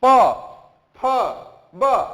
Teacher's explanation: Lips आकर के आपस में सट रहे हैं, तो इनका उच्चारण स्थान जो हो जाएगा ओष्ठ।